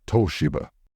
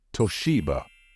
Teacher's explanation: many non-native speakers tend to pronounce this word as Toshiba however in English the stress should fall on the second syllable · in English, the stress should fall on the second syllable, and it should be pronounced as Toshiba.